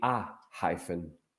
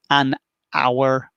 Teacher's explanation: hyphen, the first sound, H, is a pronounced sound. So it would be a hyphen.